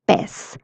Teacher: the s sound of Z is used in Latin America, especially in Mexico